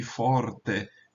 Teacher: Mas vejam, notem, a vogal é breve. A sílaba é que é longa. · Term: longa por posição